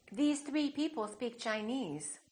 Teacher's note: every example in the following sentences has the tense vowel, E